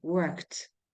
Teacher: in the word we pronounce the last uh sound like T